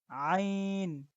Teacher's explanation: তো আমরা আইনের উচ্চারণটা গলার ভিতর থেকে করব। আইনের উচ্চারণটা মুখ থেকে করলে হবে না, বরং গলার ভিতর থেকে করতে হবে